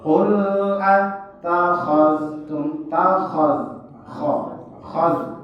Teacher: Nah, karena itu huruf-huruf, salah satunya itu huruf isti'la salah satu. Kemudian ada juga huruf kho, bunyinya O bunyi kho, bukan kha. Nah, jadi kalau dia nggak dipraktekkan dalam baca, ya, qul takhaz, bukan takhaz, tapi qul takhaztum takhaz khaz.